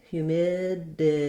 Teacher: we'll see that this t is a flap and this d can be written as a d or a flap